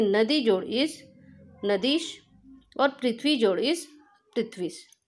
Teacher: दीर्घ ई और दीर्घ ई मिलकर भी बन गया दीर्घ ई